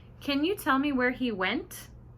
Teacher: did you hear how my voice went up at the end